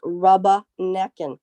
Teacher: by dropping the ER and replacing it with an ah sound